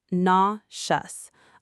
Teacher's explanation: A lot of learners want to pronounce every letter, but the e and u combine into one soft sound.